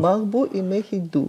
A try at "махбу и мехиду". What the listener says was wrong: Да.